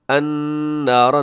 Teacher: ربنا انک نون مشدد پہ غنہ کیجیے گا، من تدخلن، اور من پہ اخفا ہے، اور تدخل النار، تد میں دال ہوگا قلقلہ، النار نون مشدد پہ غنہ ہوگا، را اس کے اندر پر ہے۔